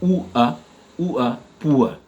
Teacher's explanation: quelqu'un qui est pauvre, on dit poor, donc on prononce avec la diphtongue ou a, poor